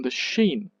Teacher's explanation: you don't give the stress to all the words, but just sheen because that's the focus of it